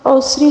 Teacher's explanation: سین کی سیٹی را کو باریک پڑھیں گے کیونکہ را کے نیچے زیر ہے